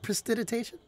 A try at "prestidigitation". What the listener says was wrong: There was a G that was missing in there.